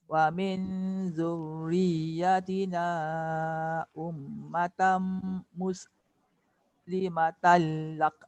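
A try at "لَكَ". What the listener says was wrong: Lak, jangan lak. Lak dia jadi qalqala. Muslimatan lak. Jaga sin.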